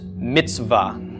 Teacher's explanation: So the ts and the v are sort of just running into each other. There's no vowel sound in between them.